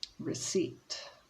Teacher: so we don't pronounce the p